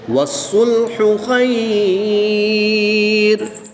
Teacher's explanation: لین عارض ہوگی، 2 سے 3 الف تک کھینچ کر پڑھیں گے